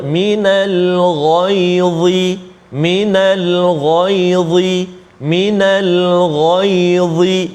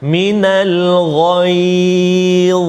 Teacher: huruf dha hujung lidah kita keluar sedikit kena ataupun sentuh pada gigi kacip atas kan